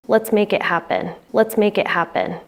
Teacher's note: In fluent speech, the T in it is pronounced like a glottal T. It sounds like the stopping of air in the throat.